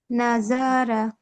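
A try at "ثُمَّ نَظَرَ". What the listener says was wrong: নাযরা, হরকত উচ্চারণ টেনে পড়া যাবে না। সুম্মা নাযরা, আপুর পড়ায় কিন্তু অনেক সমস্যা আছে, আপুর হরকত টেনে পড়ার সমস্যাটা আছে, হরফ উচ্চারণেও কিছু সমস্যা আছে।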